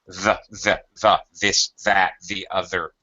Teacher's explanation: Once you become proficient at the th sound, you're barely sticking your tongue out. It's just the tip of your tongue is ever so slightly outside of your teeth. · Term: voiced th